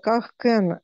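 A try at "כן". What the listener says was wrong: Только не кен, а кан. Слегка же поправляю, но будет кан,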